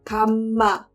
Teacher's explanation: But instead, the way that is singing it, the kam, it closes to the M really quickly, and it stays on that M for a while